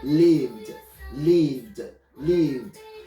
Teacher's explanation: the d is not a separate syllable is meshed together it's not a separate syllable